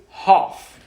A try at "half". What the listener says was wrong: It is half. Don't pronounce it half. L is silent. It is written half, but pronounced half.